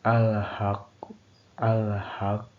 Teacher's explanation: Hukum ini terjadi apabila huruf qalqalah berada di akhir kata tetapi tidak dibaca wakaf secara sempurna atau pantulan berada di antara antara ringan dan kuat. Cara membacanya adalah dengan pantulan sedang, tidak terlalu lemah, dan tidak terlalu kuat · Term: qalqalah husto